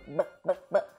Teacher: Então quando você põe a mão aqui no seu pescoço, você sente a vibração das suas pregas vocais, que ocorre nos sons vozeados. Então, o B é um som vozeado porque eu sinto as minhas pregas vocais vibrando